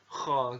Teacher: dikeluarkan dari pangkal tenggorokannya jadi diucapkan itu dengan mengalirkan nafas jadi ketika ngomong kok gitu ada nafas disana dan atau kalau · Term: huruf kha